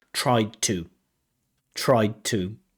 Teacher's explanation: when we say tried to in the past, because we have that to, sometimes that D disappears, right? So I tried to tell them sounds like present, but it's absolutely fine in terms of connected speech pronunciation.